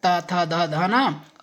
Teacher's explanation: हम कोई वर्ण त, थ, ध, न बोलते हैं तो हमारी जीभ का अगला हिस्सा हमारे दांतों से टच होता है। और दोस्तों बगैर दांतों के टच हुए हम इन वर्णों को नहीं बोल सकते। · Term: दातव्य